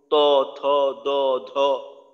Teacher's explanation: উচ্চারণ করি তখন এই যে 11 নাম্বার মাখরাজের ব্যবহারের মাধ্যমে করি জিহ্বার আগাটা সামনের উপরের দুই দাঁতের গোড়ার সঙ্গে লাগে